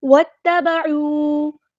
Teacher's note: واو کو ہم نے تا کے ساتھ ملا دینا ہے، حمزۃ الوصل ہمارا ڈراپ ہو جائے گا۔ واتبعوا، عین کو غصہ ہے لیکن مڈل تھروٹ سے ادا کرنا ہے، واو مد آ گیا تو مد اصلی کریں گے۔